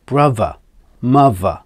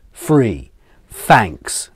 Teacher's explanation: Another version is the V and F sounds you hear instead of the TH sound. This is called TH fronting, and it comes in words like brother, mother, with the V, and the F comes as free, thanks, for example.